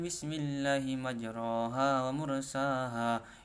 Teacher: taklil suara antara fathah dan imalah